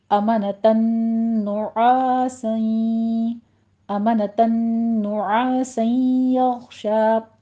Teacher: پہلے تنوین کے بعد نون آ رہا ہے تو نون کا ساؤنڈ دینا ہے غنے کے وقت